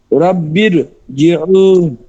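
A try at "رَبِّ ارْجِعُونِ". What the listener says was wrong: হ্যাঁ আরো মোটা হবে, রব্বেও, বেও।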